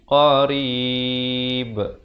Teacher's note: diwaqafkan dengan diberikan pantulan, diberikan tanda mati mendatang kerana ba merupakan huruf qalqalah. Qalqalah di sini adalah qalqalah kubra dan diwaqafkan dengan sekurang-kurangnya 2 harakat, 4 atau 6.